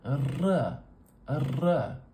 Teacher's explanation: There is a symbol R, like this, in the IPA, but it's not for the North American English R. It's for the trill, and more specifically, the apical trill.